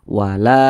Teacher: Makanya la ini dibaca panjang. Mad tabi'i panjangnya 2 harokat.